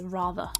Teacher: at the very end of the word, there's actually no vowel sound after the end of the word. So, therefore, we don't pronounce the R sound and we just say rather.